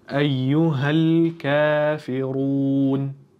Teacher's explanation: Kaf harfimiz 2 harakat cho'ziladi.